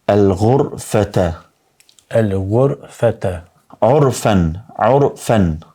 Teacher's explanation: ra e ri ashtu prej rasteve kur lexohet me domethënë në formë të fortë apo të rëndë është kur vjen pas zanores u domethënë paraz përmendëm kur vjen zanorja u me u raja me